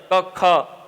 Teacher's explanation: और जिवा मूलम जो जेवा मूल व वर्ण है क ख इनका उच्चारण स्थान जीभ के मूल भाग से होता है